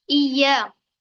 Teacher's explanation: हमजा से इय्या, हमजा को एक बार या से मिलाएंगे, फिर एक बार या के साथ पढ़ेंगे। इय्या, सख्ती से पढ़ेंगे या को, क्योंकि तशदीद है इसलिए।